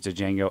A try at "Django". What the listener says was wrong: D is silent. The D is silent.